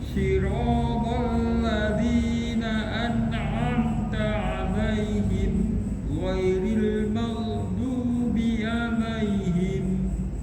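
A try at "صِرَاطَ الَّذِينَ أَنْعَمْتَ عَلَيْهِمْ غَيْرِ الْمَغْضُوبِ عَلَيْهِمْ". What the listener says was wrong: An'amta 'alaihim tidak ada wakaf di situ. Ya, tidak ada wakaf di situ. Wakaf itu berhenti. Wakaf itu tidak ada berhenti di situ. Jadi di situ ada namanya tanda wakaf lazim, lam alif. Lam alif di situ tidak boleh berhenti. Sebaiknya tidak berhenti. Jadi siratal ladzina an'amta 'alaihim ghairil maghdubi 'alaihim.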